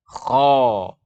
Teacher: Dengan terangkatnya pangkal lidah, maka suara menuju ke langit-langit. Suara menuju ke langit-langit itu akan menghasilkan suara akan terbaca dengan tebal. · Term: sifat isti'la